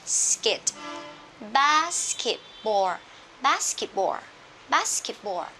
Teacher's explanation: hai âm vô thanh đứng cạnh nhau, SK, SP, ST, thì phụ âm thứ hai chúng ta sẽ đọc hữu thanh hóa, tức là đọc thành có rung cổ họng luôn